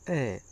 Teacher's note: जीभ बीच में से उठती है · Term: मध्यम स्वर